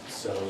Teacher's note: you also have the sh just replaced down to a s